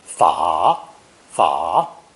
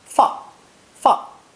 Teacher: This character is pronounced third tone, 法, 法, and sometimes fourth tone